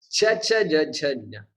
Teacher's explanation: they are called palatals. Okay, palatal, because it touches the palate.